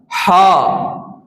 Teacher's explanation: ہا، آپ کے سینے سے، اکسل حلق سے یہ ہا کی آواز نکلتی ہے۔ ہا کا حرف جو ہے وہ اکسل حلق سے ادا ہوتا ہے · اگر آپ ہا ادا کریں تو آپ کو محسوس ہوگا کہ آپ کے سینے سے آواز آتی ہے۔ ہا، آپ کے سینے سے، اکسل حلق سے یہ ہا کی آواز نکلتی ہے۔